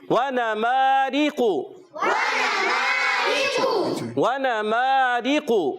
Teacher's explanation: را کی نیچے زیر آنے کی وجہ سے را کو باریک پڑھیں گے، قاف کو موٹا پڑھیں گے، موٹے حروف میں سے ہے.